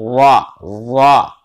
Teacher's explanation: जबान की पुश्त करीब सिरा जबान, यानी जबान की पुश्त भी वो वाली जो कि जबान के अगला जो सिरा है उसके पास वाली जो पुश्त है, करीब सिरा जबान वाली, तालु से मिलकर रा अदा होती है